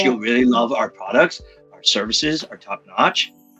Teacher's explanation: we have a problem with what's called uptalk. question inflection.